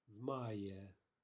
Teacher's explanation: we're pronouncing the v as though it were part of the word that follows